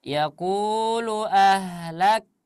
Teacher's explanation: kafnya jangan ke bunyinya. Ahlak itu bukan qalqalah.